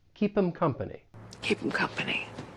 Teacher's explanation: It's like the H just gets muted. And then we can link the consonant sound with the vowel sound. So instead of keep her, it's going to sound like keeper. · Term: elision